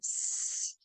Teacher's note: it's created with a hiss of air turbulence · that causes friction in the air so like the sound s you can feel how it's kind of turbulent in your mouth when you make that sound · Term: frickative